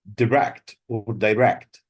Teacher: The stress is on the second syllable, whether it's a verb or an adjective.